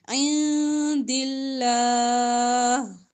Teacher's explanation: عندی نون کی آواز کو چھپائیں گے، اخفا کریں گے